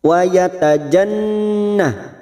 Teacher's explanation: nun yang bertasdid gunna musaddadah, kita dengungkan dan ditahan selama 3 harokat